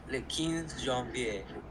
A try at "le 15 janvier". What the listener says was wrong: I would say more of a 15, like an kind of nasally, but you got the rest of it really, really well. Like le 15 janvier.